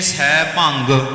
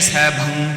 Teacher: ਕਈ ਕਹਿੰਦੇ ਨੇ ਸੈਭੰਗ ਗਗੇ ਨਾਲ ਬਲ ਸੈਭੰਗ ਕਈ ਕਹਿੰਦੇ ਨੇ ਸੈਭੰ ਇਹਦਾ ਸਹੀ ਉਚਾਰਨ ਹੈ ਸੈਭੰ